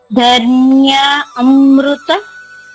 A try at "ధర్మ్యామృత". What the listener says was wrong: మళ్ళా ఆ చెప్పలేదమ్మా నేను, ధర్మ్యామృత. నేను ఆ చెప్పానా, ఆ చెప్ప ఎందుకు ఆ చెప్తున్నారు? ధర్మ్యా